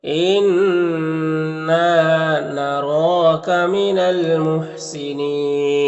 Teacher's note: इन्ना नून मुशद्दद गुन्ना होगा और अलिफ मद्दा है, एक अलिफ के बराबर खींचेंगे। रॉ के ऊपर खड़ा ज़बर है, रॉ के ऊपर पढ़ेंगे।